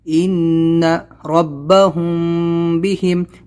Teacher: وحصل، دیکھو یہاں پر وحصل ما فی الصدور ان ربهم بهم، میم ساکن کے بعد میں با ہے، اخفا شفوی ہوگا یہاں پر، غنہ کے ساتھ